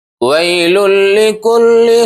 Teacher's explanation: تنوین کے بعد حروف ادغام میں سے، یعنی حروف یرملون میں سے لام آیا ہے، تو یہاں ہوگا ادغام بلا غنہ، جس کو ہم کہتے ہیں ادغام تام۔